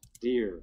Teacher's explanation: So the one at the end, here on the left, deer, is the one that's going to sound the most voiced, because the voiced sound should have a lower F0 at the start, whereas a high F0 at the start is really more indicative of aspiration or voicelessness